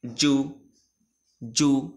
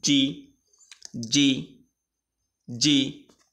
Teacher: জু বলার সময় ঠোঁটটা গোল হবে, আর যা জি বলার সময় এমনি ঠোঁট স্বাভাবিক থাকবে, একটু ফাঁকা থাকবে, কিন্তু গোল হবে না। তাহলে জিম, জিমে যদি পেশ দিই তাহলে হবে জু, জু।